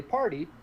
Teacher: if you say party, par is where you get the stress